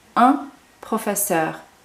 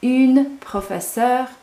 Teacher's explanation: It's not a nasal sound, it's une as opposed to un.